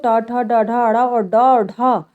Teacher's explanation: ये मुर्धा को स्पर्श करते हैं